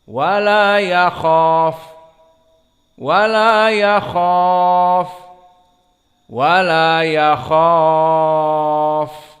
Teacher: Karena mad tabi'i kha bertemu dengan setelahnya harf fa. Dan kita sukunkan di fa, itu dia ketentuan mad arid li sukun.